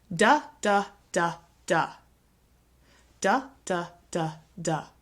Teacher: none of the syllables are longer or louder than the other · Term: syllable timed